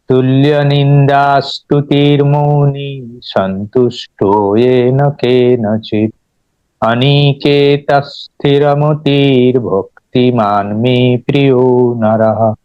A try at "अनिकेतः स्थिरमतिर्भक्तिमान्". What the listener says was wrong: नी को ज्यादा लेंगी कर रहे हैं और स्थिर को भी लेंगी कर रहे हैं, ती को लेंगी, ऐसा नहीं। अनिकेत, अनिकेत नहीं, अनिकेत स्थिरमतिर। उसको ह्रस्व में ही बोलना है।